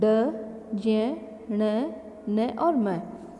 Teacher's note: इनका उच्चारण करते समय नासिका का नासिका से वायु बाहर आती है इसीलिए इन्हें नासिक्य व्यंजन कहते हैं